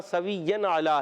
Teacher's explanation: عین کو حلق کے درمیان والے حصے سے، لام پر کھڑا زبر ایک الف کھینچ کے ادا کریں گے۔